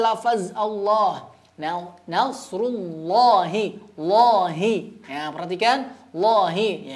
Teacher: jadi lafaz Allah dibaca tebal pada huruf lam ya ya ketika huruf sebelumnya berharakat fathah atau lemak tetapi jika